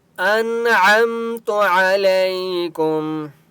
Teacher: نون کے پر سکون ہے لیکن یہاں پر اخفا نہیں ہوگا کیونکہ آگے عین ہے، حرف حلقی ہے، ٹھیک ہے۔ انعمت علیکم، عین کی آواز حلق سے نکالیں گے۔